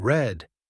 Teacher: The r sound in red, not a rolling r like in some languages